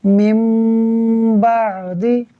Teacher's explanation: نون ساکن کے بعد با ہے، لہٰذا نون ساکن میم سے بدل جائے گا، اخفاء کا قاعدہ ہوگا، غنہ کر کے پڑھیں گے